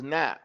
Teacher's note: This is na, from the tip of the tongue.